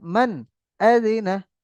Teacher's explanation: নুন সাকিনকে বিনা গুণায় স্পষ্ট করে পড়তে হবে